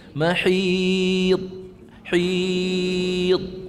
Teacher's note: Sekiranya kita lepas mahid, itu qalqalah salah, sedangkan huruf dad bukan di kalangan huruf qalqalah.